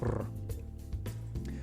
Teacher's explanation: Ro is a short rolling of the R. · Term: short rolled R